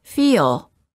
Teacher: extra uh sound in between instead of saying feel say feel it's almost as if you're adding an extra syllable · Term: long vowels plus l